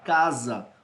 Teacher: esse S entre as duas vogais, ele vai ter som de Z